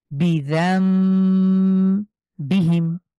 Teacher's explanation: এই নুন সাকিনকে আমরা না পড়ে সরাসরি মিম ধরে পড়ছি